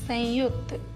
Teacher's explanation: संयुक्त शब्द में हलंत न य से पहले आ रहा है, जिसकी वजह से हलंत न का उच्चारण अनुस्वर की तरीके से किया जा रहा है।